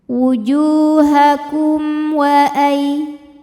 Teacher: Ada hukum idzhar syafawi. Karena mim sukun menghadapi huruf selain mim dan ba, yaitu huruf waw. Maka mim sukun ini kita bunyikan dengan jelas